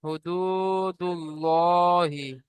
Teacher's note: আল্লাহ শব্দের ডানদিকে পেশ এসেছে তাই আল্লাহ আল্লাহ লামকে পুর করে করতে হবে।